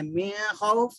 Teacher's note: یہ قاعدہ آپ پڑھ چکے تختی نمبر 9 میں, حروف حلقی اظہار کے نام سے, کہ نون کے بعد میں اگر خا, حمزہ ہا, عین ہا, غین خا اگر آ گئے تو نون کو ظاہر کر کے پڑھنا ہے, نون کو ناک میں نہیں چھپانا ہے